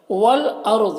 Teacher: والارض، یہاں پر الف لام حروف قمری حمزہ کے شروع میں ہے تو لام کو پڑھیں گے، الف کو نہیں پڑھیں گے۔ یہاں پر را ساکنہ سے پہلے الف کے اوپر زبر ہے تو را کو پر پڑھیں گے۔